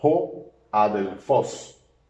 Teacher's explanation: Se puede identificar por ese artículo, que es este que está aquí, que es el artículo ho, porque fíjese que tiene espíritu rudo, y por tanto esta vocal omicron suena ho